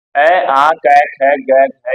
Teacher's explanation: सारे के सारे वर्णों का उच्चारण स्थान क्या है कंठ है